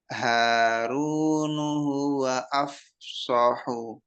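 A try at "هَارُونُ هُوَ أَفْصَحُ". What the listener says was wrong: Nah, udah terpisah itu.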